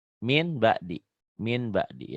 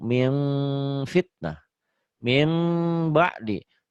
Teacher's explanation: Min nun matinya bunyi jadi m, mim bindeng sedikit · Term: iklab